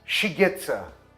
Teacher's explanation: Shigetsa, she gets a, se torna shigetsa. Os artigos the e a, tudo vira o schwa, a. Então, essas palavras todas ficam espremidas.